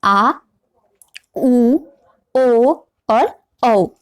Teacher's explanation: जो जीभ का जो पीछे का भाग होता है वो क्या करता है, ऊपर की ओर उठता है। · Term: पश्च स्वर